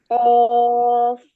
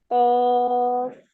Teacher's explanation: زبان کی جڑ کوے کے متصل تالو پر لگائیں